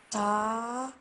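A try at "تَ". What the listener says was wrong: Okay, you've got the right letter, but you just need to pronounce it for the amount of time that you should pronounce it for. So this is a simple ta with a fatha. So ta, not twa, ta.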